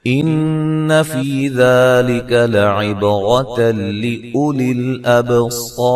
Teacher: नून मुशद्दद पे गुन्ना ज़रूरी है